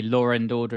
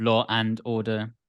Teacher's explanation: linking would be things like the linking R where you say Laura and order instead of Law and Order